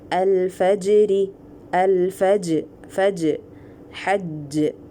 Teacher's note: Qalqala, separation of the makhraj without any jaw movement.